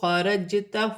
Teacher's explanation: جیم ساکن ہے، حروف قلقلہ میں سے ہے، قلقلے کے ساتھ ادا کیا جائے گا